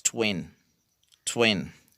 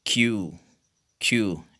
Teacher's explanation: And the last point is the approximants are at least partially voiceless when they occur after initial p, t, k. Okay, approximants are basically voiced sounds, but they become voiceless when they come after p, t, k